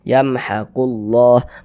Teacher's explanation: Huruf lam yang di tengahnya nih, huruf lam jalalahnya nih dibaca tebal, dibaca tabkhim sehingga dibaca yamhaqullah.